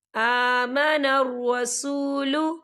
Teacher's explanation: یہ دیکھیں کھڑی حرکات ہے تو ہم اسے 2 یا 3 حرکت کے برابر کھینچے پڑھیں گے